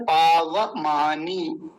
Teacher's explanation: पावमानी में नकार पर दीर्घ ईकार है, बड़ा खींचना है